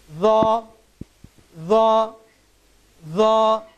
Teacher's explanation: জিহ্বার আগা সামনের উপরের দুই দাঁতের আগার সাথে সম্পৃক্ত হয়ে হরফটির উচ্চারণ হবে